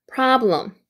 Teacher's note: pra까지가 pra라고 있는데 아의 발음 기호에 강세 표시이기 때문에 pra에 강세 주시고요. 그 다음에 blum L 발음이기 때문에 blue 할 때 입천장을 혀를 올리면서 blum problem 이렇게 되죠.